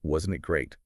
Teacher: you can use a question with a falling tone to make a comment